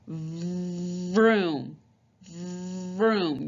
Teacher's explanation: top teeth on the bottom lip and it's like you're forcing air out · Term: v sound